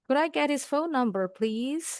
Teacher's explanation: Naiknya di kata please.